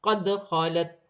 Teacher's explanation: دال ساکن ہے، حرف قلقلہ میں سے ہے، قلقلہ کے ساتھ ادا کیا جائے گا